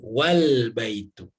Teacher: Namun apabila didahului oleh kata wa, gitu ya tadi, ya. Wa, maka A tidak dilafalkan lagi, kalimat dilafalkan dengan wal baitu, ya. Bukan wa al baitu, tapi dibacanya wal baitu, ya.